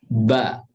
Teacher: kalau ba itu kita ucapkan dengan merapatkan kedua bibir, tapi bibirnya adalah bibir yang dalam. Bibir yang basah, maksud saya.